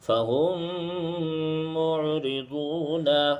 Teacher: ساکن کر دیتے ہیں۔ اب دیکھیے یہاں ادغام شفوی ہوگا، کیونکہ میم ساکن کے بعد میم آ رہا ہے، اور میم ساکن کے بعد میم آئے تو ادغام شفوی ہوتا ہے